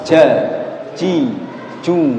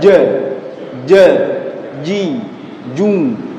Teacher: ketika antum melafalkan huruf jim tidak boleh ada aliran nafas yang mengalir. Tetapi pada kenyataannya ya, hampir sekian banyak dari kaum muslimin ketika baca jim itu mesti disertai sifat dengan sifat hamas, ja, ji, ju gitu. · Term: jahar